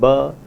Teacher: the voiced bilabial plosive ba